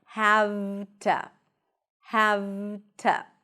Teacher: Have to. However, the to, when it's unstressed, is reduced to a schwa.